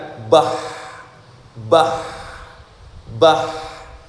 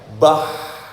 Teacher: Contohnya misalkan ha misalkan ha ketika dimatikan bah suaranya enggak bisa langsung habis ada sisanya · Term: rikhwah